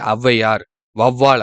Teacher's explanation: இதுவே ஔவையார், வௌவால் அப்படின்னு முதல்ல வரும்போதும் தனக்குரிய என சொற்களின் முதலில் வரும்போது தனக்குரிய 2 மாத்திரை அளவிலிருந்து குறைந்து 1 1/2 மாத்திரை அளவில் ஒலிக்கிறது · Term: ஔகார குறுக்கம்